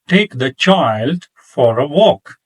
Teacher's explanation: If you have noticed that I stressed take child and walk